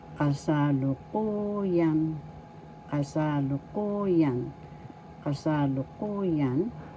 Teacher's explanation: First syllable ka, second syllable sa, third syllable lu, fourth syllable ku, and fifth syllable yan. The accent is in the fourth syllable